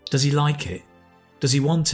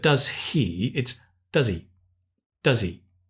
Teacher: the important thing here is with he, the h, the H usually disappears in the question.